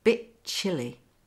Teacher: Notice the T's lost again.